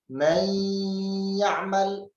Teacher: pada idgham bi gunnah pada huruf ya dan waw tentunya tidak terdapat nabar, sekedar dimasukkan saja tanpa ada penekanan